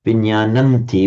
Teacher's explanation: the final sub-dotted M assimilates to the following T sound, which is a dental. So, the M changes to an N. The consonant is the the nasal corresponding to T.